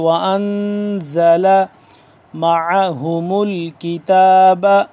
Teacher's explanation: نون ہے اس پہ ساکن، اس پہ ہم کریں گے اخفا